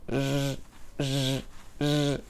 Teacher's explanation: A característica principal de som J é que é fricativo. Essa consoante tem vibração das cordas vocais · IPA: /ʒ/